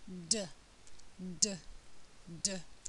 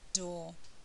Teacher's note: is on the ridge um just behind the upper teeth um this time it's voiced so if I put my fingers to my throat I'll feel the vibration of the vocal cords hardly any air flow · hardly any air flow it's not going to make my paper move · air is stopped and then there's an explosion of air um the tongue is on the ridge um just behind the upper teeth